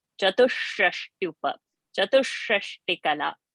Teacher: So chatush sh, and that sh is a murdhani sh. Tongue needs to touch the roof of the palate.